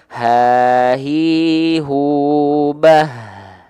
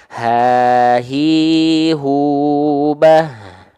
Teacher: Ha besar itu hampir sama kayak ha kecil. Dia punya sifat hams juga, mengalir nafas juga. Tapi karakteristik nafas yang mengalir itu biasa aja, nggak berbisik karena keluarnya dari pangkal.